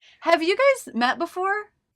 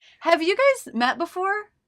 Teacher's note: you guys met before that's because this is a yes/no question a question that can be answered with yes or no goes up in pitch at the end other questions and statements go down in pitch I don't think